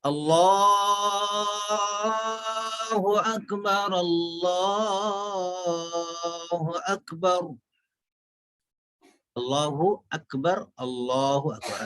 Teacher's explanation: لام پہ کھڑا زبر ہے تو کھڑا زبر ہے، اس کو کھینچنا ہے۔